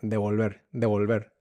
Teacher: Aquí viene un aspecto importante de la pronunciación chilena y de la pronunciación de muchas otras regiones también. Y es que la V o la B también, que viene entre vocales o después de una vocal, tiende a ser un sonido bastante débil, a veces imperceptible. Y en este caso, Neruda no dice devolver el cuaderno, dice devolver, devolver.